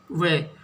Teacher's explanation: अब ऐसा कौन सा शब्द है जिससे ध्वनि दांत और होठ दंतोष्टो यानी दांत और होठ दोनों से मिलकर आती है